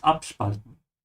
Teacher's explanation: This is a separable verb, so make sure to say ab emphasized